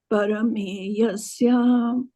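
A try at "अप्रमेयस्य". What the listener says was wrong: pra, not para, pra. Anāśino prameyasya tasmāt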